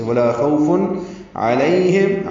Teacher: واو لین ہے، ہونٹوں کی گلائی سے ادا کریں گے۔ فن میں اظہار ہے تنوین کے بعد عین آنے کی وجہ سے، ولا خوف علیہم، عین وسط حلق سے نکالیں گے، لیہم پڑھیں گے، غیر المغضوب علیہم سورۃ الفاتحہ میں 2 مرتبہ ہے، علیہم لوگ پڑھتے ہیں، یہ غلط ہے۔